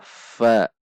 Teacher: antara ujung gigi seri atas dengan bibir bawah bagian dalam Jadi bukan antara dua bibir bibir atas tidak ikut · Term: huruf v